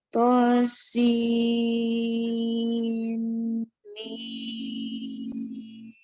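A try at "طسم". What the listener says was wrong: Untuk idghamnya itu kurang, masih dilamakan lagi sedikit. Tosin mim. Gunnah itu ditahan agak lama dari harokat biasanya. Tosin mim. Boleh dicoba. Yang kurang lama tuh bagian dengung ya, bagian yang diidghamkan.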